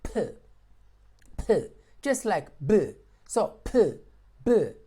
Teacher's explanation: these two are produced by blocking the air using your lips